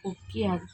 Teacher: குற்றியலுகர சொற்களை தொடர்ந்து யகரத்தை முதல் எழுத்தாக கொண்ட சொற்கள் வரும்போது குற்றியலுகரத்தில் உள்ள உகரம் இகரமாக மாறும். கொக்கு யாது கொக்கு யாது கொக்கி யாது. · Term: குற்றிய லிகரம்